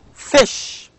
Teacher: fricatives as an example now if we pronounce this fish now fish begins with fricative and also ends in again fricative these sound these two sounds are voiceless sounds